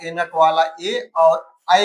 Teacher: कंठ तालव्य से आपका एनक वाला ए और ऐ का होता है।